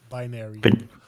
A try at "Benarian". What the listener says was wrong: No, it's double N.